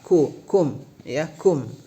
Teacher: ka juga termasuk huruf hamas. Keluar sedikit napas.